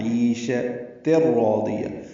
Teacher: تا کو را سے ملا دینا ہے، تنوین کے بعد را آنے کی وجہ سے ادغام کامل ہوا ہے